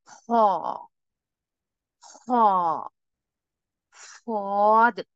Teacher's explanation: जबान की जड़ ऊपर की तरफ बुलंद होती है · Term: हैवी लेटर